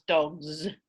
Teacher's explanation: that becomes dogs with a z sound because of progressive assimilation right the the g is voiced and that affects the following